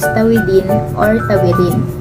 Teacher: ang d ay karaniwang nagiging R